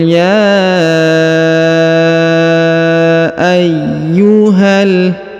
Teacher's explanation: kemudian huruf ya Yang ini diberikan tanda tasdid atau penekanan sehingga huruf Ya ditahan dan ditekan dua harakat